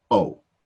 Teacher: just keep it a straight long oh